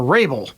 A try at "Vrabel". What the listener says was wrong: With the V. You have to pronounce the V.